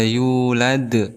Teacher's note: Ada qalqalah kubra. Kenapa? Karena ada huruf qalqalah yaitu dal diwaqafkan ataupun di akhir kalimat.